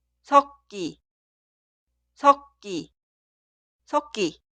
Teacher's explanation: las consonantes iniciales de las sílabas posteriores se pronuncian como sonidos forzados. Por eso la primera palabra, mezcladura, se escribe así, pero suena 섞기, 섞기, 섞기.